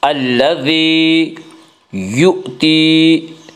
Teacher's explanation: مدہ وہ یا جو ساکن ہو، اس سے پہلے زیر ہو، یا مدہ کو ایک الف کے برابر کھینچ کر پڑھیں گے